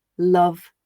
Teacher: this is called clear l we make clear l before vowel sounds